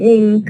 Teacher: Like for example in ink, we have the na becoming ing because it's followed by ka here, and alveolar sound becoming velar because it is followed by a velar sound. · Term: Place assimilation